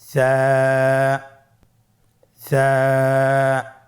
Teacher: জিহ্বার আগা সামনের উপরের দুই দাঁতের আগার সঙ্গে লাগিয়ে উচ্চারিত হয়।